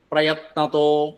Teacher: വിസർഗം ഓകാരാകും അതുകൊണ്ട് പ്രയത്നതോ എന്ന് വരും